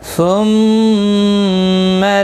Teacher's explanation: ثم میم مشدد پر گنہ ہوگا، گنہ کے ساتھ پڑھیں گے